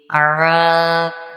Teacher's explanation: عین حلق سے نکالیں گے